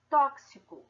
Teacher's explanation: Então, uma letra, como é o caso do X, pode representar mais de um fonema. No caso, o X representa dois fonemas, o K e o S.